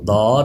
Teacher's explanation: ضاد کو پر کیجئے، دواد نہیں پڑھنا، پڑھنا اس کو داد ہے، داد، لیکن پر پڑھنا ہے، حروف مستعلیہ ہے یہ، زبان کی کروٹ اوپر کی داڑھوں کی جڑ میں لگا کے پھر اس کو پڑھیں گے۔